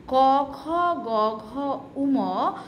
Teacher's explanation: ক, খ, গ, ঘ, উম যখন আমরা বলি শব্দের কম্পাঙ্কটা ধীরে ধীরে নিচের দিকে নামতে থাকে।